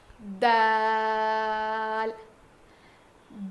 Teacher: زبان کی نوک کو سامنے کے 2 دانتوں کے جڑ میں لگانے سے ادا ہوتا ہے. سامنے کے 2 دانتوں کو ہم ثنایا علیہ کہتے ہیں, اس کے جڑ میں لگانے سے ادا ہوتا ہے.